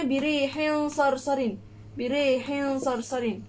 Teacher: Jadi kalau ikhfa hakiki ni dia tak dengung sangat. Dia tak berapa nak dengung, tapi dia sedikit je dengung dia.